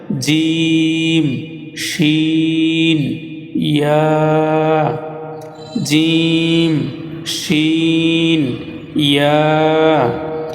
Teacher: জিহ্বার মধ্যখান তার বরাবর উপরে তালুর সঙ্গে লাগাইয়া 3টি হরফ উচ্চারিত হয়